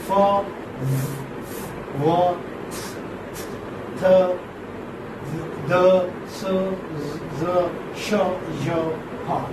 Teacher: So fricatives are, as you notice, while pronouncing them, while articulating them, that they are sounds made by forcing breath out through a narrow opening